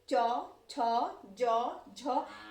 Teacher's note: जब हम इस वर्ण का उच्चारण करने में हमारा जिह्वा हमारे तालु को टच करता है यानी कि छूता है, तो वहां पर तालव्य है।